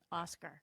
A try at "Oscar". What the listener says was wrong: Yeah, put the R on it. It's